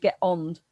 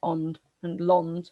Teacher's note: Shropshire's an H dropping dialect. You drop H's, and you'd get ond and lond for land.